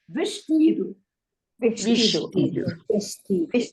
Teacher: when an S is before a consonant, C, T, it becomes sh